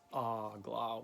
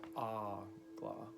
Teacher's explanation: ah-gla with the emphasis at the beginning, the first syllable